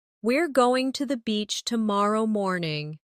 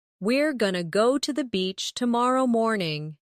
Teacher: Going to often becomes gonna in casual speech.